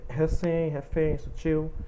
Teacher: Oxítona, vocês podem perceber que ela contém a sílaba tônica, né, sendo a última sílaba